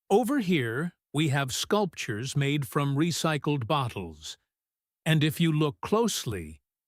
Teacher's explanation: She speeds up when listing the objects and the actions and slows down when she wants them to look at something specific. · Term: enthusiastic explanation rhythm